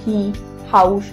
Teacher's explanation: H for হি, হাউস। H বললে দেখো তোমার গলা দিয়ে শুধু হাওয়া বের হয়, কোনো জিভ ঠোঁট লাগে না। হি, হাউস, তাই এটা গলার ধ্বনি।